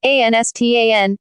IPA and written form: ˈaɪnstaɪn (Einstein)